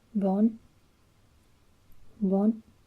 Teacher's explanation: it has the sharp ascending tone. So it's bon, bon.